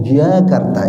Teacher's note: Jadi nggak ada hawa yang keluar, Jakarta gitu. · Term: orang Arab